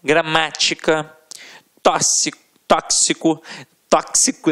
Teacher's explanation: a sílaba tônica sempre na antepenúltima sílaba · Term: proparoxítonas